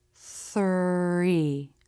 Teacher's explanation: in the THR cluster, the lips will round a little bit for the R as you make the TH. Three. Be careful with the tongue tip.